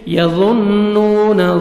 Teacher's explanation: نون مشدد نوز میں ساؤنڈ لے کے جائیں گے واو مدہ نون کو 1 سیکنڈ کھینچیں گے واو جزم سے